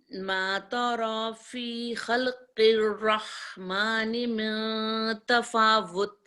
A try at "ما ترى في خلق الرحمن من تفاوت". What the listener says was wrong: Good.